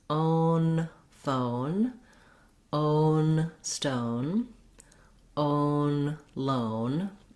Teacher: have a rounded vowel and then close and lift for the n own then you can add in your initial consonant to make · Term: diphthong o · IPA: /oʊ/